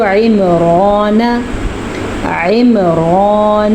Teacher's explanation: عین کے مخرج کو واضح کر کے پڑھیں اور را کو پر پڑھیں کیونکہ را کے اوپر کھڑی زبر ہے، نون کو لمبا نہیں کرنا، نون پہ زبر ہے۔